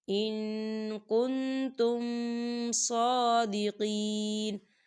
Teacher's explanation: ہم نون ساکن کی آواز کو ناک میں چھپائیں گے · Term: اخفا